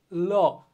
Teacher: বাতাসটা কিন্তু আমার জিভের দুই পাশ দিয়ে বের হচ্ছে, তাই না? তো এইভাবে যেহেতু উচ্চারিত হয়, এই জন্য এটাকে বলা হয় পার্শ্বিক ধ্বনি। · আমার জিভের সামনের অংশটা হচ্ছে কি দাঁতের গোড়ায় বা দন্তমূলে লাগতেছে